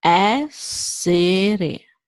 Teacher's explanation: We have E, the first E is open, E, then we have the second and the third that are closed. So essere.